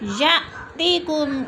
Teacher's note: या में हमज़ा साकिन है, झटका दे के पढ़ेंगे